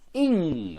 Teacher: not the tip of the tongue it's the back of the tongue which touches the roof of the mouth